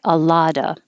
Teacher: A lot of times you don't hear the V at all